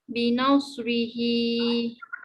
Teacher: sod dia ada sofir dan hamas